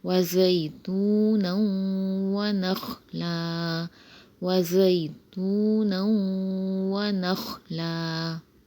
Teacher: یہاں پہ دو زبر کی تنوین کے بعد واو آ رہا ہے، واو مشدد، تو یہاں ادغام مال غنہ ہوگا